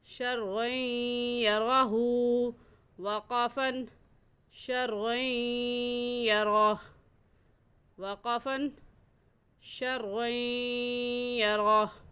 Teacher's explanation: और दूसरी बात कि शर्र यरा की रा के ऊपर ज़बर है तो इस रा को पुर यानी मोटा करके पढ़ेंगे। और मोटा करने का तरीका कि आप अपने दोनों होंठों को गोल कर लें कि तो लफ्ज़ खुद ब खुद मोटा हो जाएगा।